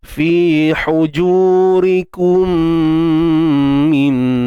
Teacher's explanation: masukkan mim mati ke dalam mim. Maka dengung yang berlaku sempurnalah, gunnah kamilah, dengung yang kamil. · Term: idgham mislain